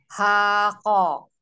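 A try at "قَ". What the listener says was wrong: Hoko. Ho, bukan ha. Tidak ko, tidak ko, tidak alhams ya. Huruf kof itu jahru, jelas. Beda dengan kaf. Kalau yang alhams kaf ya. Kof itu jelas. Nah yang hams itu malah konya. Kalau ko jelas, kalau ko jelas.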